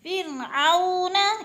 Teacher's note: وہ ساکن سے پہلے عین کے اوپر زبر ہے تو وہ لین ہو رہی ہے، وہ مدہ نہیں بلکہ وہ لین ہے، اس کو کھینچ کر نہیں پڑھنا